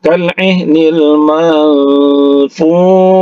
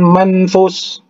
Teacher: Kemudian tanwin, maksud kami nun mati, ya, bertemu dengan huruf fa. Fa ini adalah salah satu huruf ikhfa, ya. Jadi didengungkan dia.